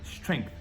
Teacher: você pode colocar um som de um K bem curtinho, que aí facilita essa transição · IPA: /streŋθ/